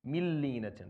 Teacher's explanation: This is called idgham kamil bila gunna. So you don't hear the noon at all.